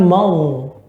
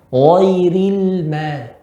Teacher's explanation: Di sini yang tebal gho-nya, ma tidak tebal. Bukan mau, tapi ma.